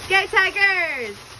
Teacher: the semi-vowel R influences the S, which is voiced as a Z. When she ends her utterance, her lips are still rounded due to the influence of the R and the contraction of the orbicularis oris. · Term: backward co-articulation